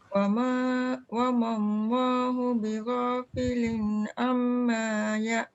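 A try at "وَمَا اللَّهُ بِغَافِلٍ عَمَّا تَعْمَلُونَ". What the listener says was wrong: Am tu kena dengung. Wa mallahu bighafilin amma ta'malun.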